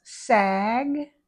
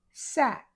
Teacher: So G uses vocal cords. C doesn't use vocal cords, but the tongue and the mouth are the same. · the K is voiceless not using the vocal cords. So G uses vocal cords.